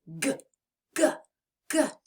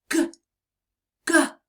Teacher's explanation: press the back of your tongue to the back of your mouth and turn your voice on and say G GG you can feel the vibration in your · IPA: /g/